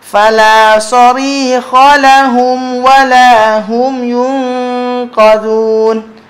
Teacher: Jadi mim mati jumpa dengan waw, mim mati jumpa dengan fa, tetap hukum izhar syafawi. Jangan dengung.